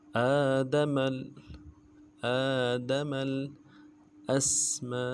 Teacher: حمزہ کو سین کے ساتھ ملانا ہے، سین سیٹی والا حرف ہے، آواز جا رہے گی سیٹی میں، اور میم کو نرم سے پڑھنا ہے، میم کے اوپر الف مدہ ہے، مد عارض ہے، مد اصلی ہے، ڈائی الف کی مقدار میں کم سے کم اس کو کھینچے گی اور حمزہ کو نرم سے پڑھیں گے۔